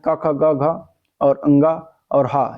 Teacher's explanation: क ख ग घ और अंग और ह यह सभी कंठ वर्ण में आते हैं